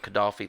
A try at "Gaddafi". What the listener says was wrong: No L.